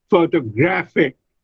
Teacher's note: And when I add IC to photograph, it becomes photographic. The stress is on the third syllable.